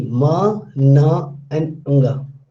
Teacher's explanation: when the air and the sound flows, it will come out from mouth as well as from the nose. So it is nasal articulation.